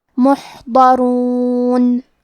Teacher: ضاد کی ادائیگی زبان کے کروٹ اور اوپر کے داڑھوں کے جڑ سے ہے. ضاد حروف تفخیم میں سے ہے تو ہمیں یہ حرف کو بھاری آواز میں پڑھنا ہے محضرون. · کلمت محضرون میں حرف الحا ہے، حا کے ادائیگی حلق کے درمیان والے حصے سے ہے کیونکہ یہاں حا ساکن ہے تو ہمیں حا کو ظاہر کرنا ہے.